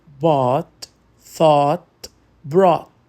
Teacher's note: Aqui, o GH é mudo e o som é de um O longo e profundo.